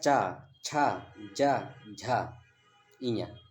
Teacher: जो च वर्ग है, इसको हम बोलते हैं तालु से, चा। देखिए, चा जब चा बोलेंगे तो आपकी जो जीभ है ऊपर चिपकती होगी।